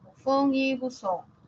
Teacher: la sa no la Z en realidad es la interdental y resulta que ambas la fa y la Za son fricativas